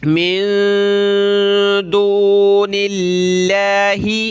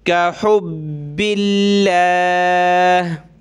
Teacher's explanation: لفظ اللہ سے پہلے نون پہ زیر ہے تو کیا کریں گے؟ لفظ اللہ کو ہم نے پتلا کرنا ہے باریک۔ من دون اللہ، دون اللہ نہیں پڑھیں گے، ٹھیک ہے، لاہی، اس نون ساکن پہ ہم نے ناک میں آواز پیدا کرنی ہے، اور آگے دال یا پہ ناک میں آواز پیدا کریں گے، دال یا دو زبر دیں، یا پیش یو، ٹھیک ہے۔